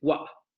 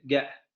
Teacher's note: Con esa pequeña glotalización al final de la palabra